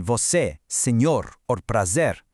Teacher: But a closed e is tighter, it's shorter, like in você, senhor, or prazer.